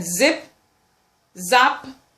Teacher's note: then we have the alveolar fricative sounds